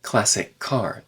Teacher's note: those two c sounds connect together